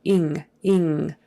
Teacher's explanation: ING is pronounced with kind of a nasal sound in the back of the throat. Ing, ing. That G is not normally pronounced.